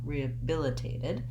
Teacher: the last syllable just sounds like did with a lax I vowel